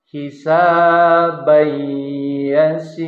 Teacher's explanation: tidak dibaca hisaban yasiro tetapi melebur ke dalam huruf ya